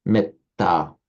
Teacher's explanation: Which in Pali is pronounced with the e is shortened because it's followed by a double consonant